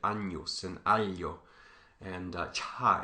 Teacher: These happen all at the same place, at the palatal sort of middle of your mouth.